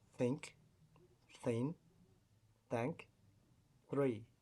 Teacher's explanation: voiceless буюу дуугүй, dental буюу interdental буюу хоёр шүдний завсаар хилийг гаргаж дуудана. Fricative буюу өгүүлэх хэрэгтний зайгаар агаар хүчтэй гаргаж дуудах нэ.